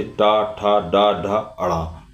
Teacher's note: कठोर तालु से उत्पन्न होने वाली ध्वनि मूर्धा ध्वनि कहलाती है। ट वर्ग की सभी ध्वनियां मूर्धा ध्वनि कहलाती हैं। जैसे ट, ठ, ड, ड, ण।